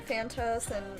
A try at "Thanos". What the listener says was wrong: There's no second T.